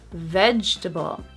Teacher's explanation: So that first syllable is so strong, it makes the second syllable disappear.